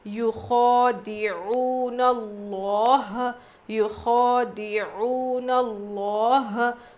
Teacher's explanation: یخادعون اللہ، یخادعون اللہ، خوا پہ کھڑا زبر ہے، کھینچیں گے، عین واو پیش عو، واو مدہ ہے، تھوڑا سا کھینچ کر پڑھیں گے 1 الف کے برابر، اور لفظ اللہ کے لام سے پہلے زبر ہے تو موٹا پڑھنا ہے